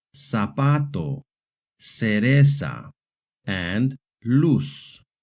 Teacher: The letter z in Hispanic American Spanish makes a hard s sound